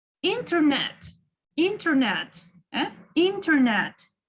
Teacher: Internet. It's mostly on the second syllable. Internet. Or on the third.